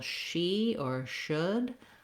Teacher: The ch sound can't continue, whereas the sh or sh sound, that one, if I'm saying, for example, she or should, I can continue that sh